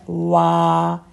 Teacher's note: दोनों हंठ गोल करेंगे तो वाव की साउंड सही बनती है